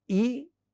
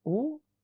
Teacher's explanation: when we say E, the tongue position is fronted. When we say oo, tongue position is retracted, it is backward. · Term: front and back